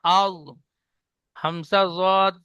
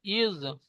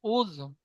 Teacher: জীবের কিনারা এবং তার বারাবার উপরের মাড়ির দাঁতের গোড়ার সাথে লাগিয়ে উচ্চারিত হয়